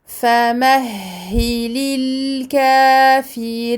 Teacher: Donc on donne au lam ici son temps de bayniyah, écoulement partiel du son. On prolonge le kaf de 2 temps, alif saghira.